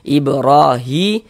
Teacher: Hi dibaca panjang. Mad thobi'i panjang dua harakat